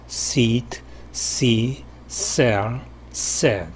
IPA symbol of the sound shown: s